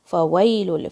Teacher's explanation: فا کے اوپر فتحہ ہے، واو کو وی کی طرح نہیں پڑھنا ہے، فوئی ایسے نہیں پڑھنا ہے، کیونکہ فا کی آواز ہونٹ اور دانت سے آتی ہے مگر واو کی آواز نہیں آتی ہے ہونٹ اور دانت سے، صرف لپس کا کام ہے، دانتوں کا کوئی کام نہیں ہے واو کی مخرج میں.